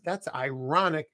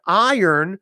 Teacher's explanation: the word ironic that's ironic you push the r but the word iron that R comes after the vowel